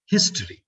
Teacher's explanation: In the first syllable, the E sound is a shorter vowel, and in the last syllable, the E sound is a long vowel. That's the distinction between short and long vowel.